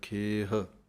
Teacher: ਖੱਖੇ ਦੀ ਲਾਂ ਲੰਮੀ ਬੋਲਣੀ ਹੈ ਅਤੇ ਹਾਹਾ ਮੁਕਤਾ ਬੋਲਣਾ ਹੈ